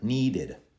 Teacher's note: Hear the extra id at the end, and a d sound after.